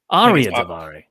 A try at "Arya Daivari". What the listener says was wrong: Arya Daivari, I think. Then pronounce the R more. Arya.